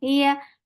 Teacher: your tongue is lifting to touch the palate, but it is not touching it. So this is making ya very light.